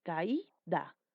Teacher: Y tiene la mayor fuerza de voz en la vocal cerrada. Por ende, ya no es un diptongo.